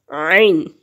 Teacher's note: عین حلق کے درمیان والا جو حصہ ہے اس سے ادا ہوتا ہے